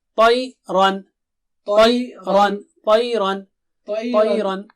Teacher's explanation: تا موٹا ہے بہت موٹا اونچا